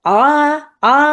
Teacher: अक्सर इसको लोग मोटा कर देते हैं क्योंकि हलक से निकालना होता है